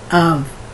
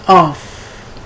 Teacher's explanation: They'll pronounce the F like it were a V.